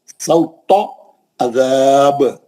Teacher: सौता बोल के पतला ते नहीं पढ़ना कभी भी, मोटा ते पढ़ना। सौता, तो गोल मुंह से मोटा, सौता अज़ाब।